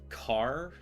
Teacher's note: car with a hard K rather than a ch sound